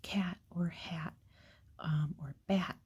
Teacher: We kind of have a reputation for having really nasally A sounds.